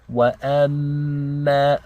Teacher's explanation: we have a meme with a shadda. This means we have to do ghunna for 2 counts.